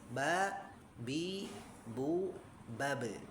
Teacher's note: dari segi nafas tidak keluar napas ya atau jahr · Teknisnya dengan apa cara mengucapkan huruf ba? Dengan merapatkan bibir ya, atas dan bawah. Ba, bi, bu, babe.